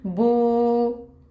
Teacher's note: तीसरा है कि अगर वाउ साकिन से पहले पेश आ जाए, अब अगर बा के ऊपर पेश होती हमने पढ़ा था बू, अब है वाउ साकिन से पहले पेश, तो इसको भी 2 हरकत लंबा पढ़ेंगे, इसको हम कहेंगे बू।